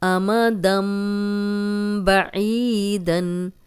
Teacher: یہ دن تھا لیکن دم بن گیا اس لیے کہ اگلا حرف با ہے